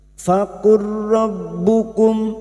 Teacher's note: memasukkan dua huruf yang berdekatan makhrajnya masuk pada huruf ro hanya masuk tanpa ditahan lama-lama faqurbukum berikutnya huruf ro masuk pada huruf ba yang bertasdid rbukum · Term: idgam mutaqoribain, idgham mutaqaribain